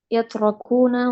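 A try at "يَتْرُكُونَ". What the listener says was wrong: Yatrukuna. Yatruku. Roknya dhammah ya.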